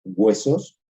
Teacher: todos reforzamos el diptongo con un elemento velar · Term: refuerzo velar ante diptongo